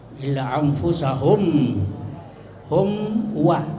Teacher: Hum wa min sukun ketemu waw, ya, izhar syafawi, ya, izhar itu jelas, ya, jadi jelas mimnya. Syafawi itu bibir, ya, jadi bibir ketemu bibir.